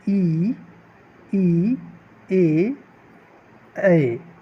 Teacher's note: अग्रस्वर, जो जिह्वा के सामने से बोला जाता है।